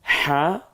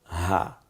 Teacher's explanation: একটা হচ্ছে 2টা বর্ণ আছে, একটি হলো হা, গলায় চাপ দিয়ে, আর একটা হা, গলায় ছেড়ে দিয়ে